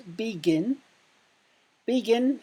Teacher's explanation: the final syllable, gin, is stressed